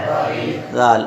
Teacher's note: ہاں، ذال اور زا میں فرق کر کے رکھیں گے، کیونکہ زا کے اندر صفت صفیر ہوتی ہے، سیٹی جیسی آواز آتی ہے، اور ذال میں سیٹی جیسی آواز نہیں آتی